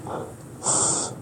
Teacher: S is a voiceless alveolar fricative.